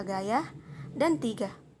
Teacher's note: bunyi G ini termasuk dalam bunyi dorsovelar termasuk bunyi hambat dan bersuara